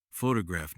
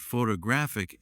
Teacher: photograph noun is stressed on the first syllable, but photographic adjective is stressed on the third